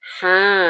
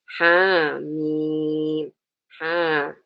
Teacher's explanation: Tapi kalau yang ha, ya, ini, bacaannya kita tidak baca 3 komponen huruf, misalnya ha, enggak, tapi dia dibaca dengan mad tabi'i, ya, tadi panjang 2 harokat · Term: mad tabi'i harfi